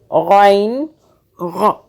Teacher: اس کو گاف کی آواز میں نہیں پڑھنا، اس کو غ جیسے آپ غرارے کرتے ہیں نا، اس کا مخرج غ وہاں سے ہوگا۔